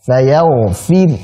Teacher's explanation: disukunkan dulu ro-nya dan karena ini disukunkan berarti jadi tipis. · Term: ismam